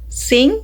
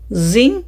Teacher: Both consonants are alveolar fricatives, meaning they are made with the tip of the tongue touch the alveolar ridge, but Z uses the vocal cords.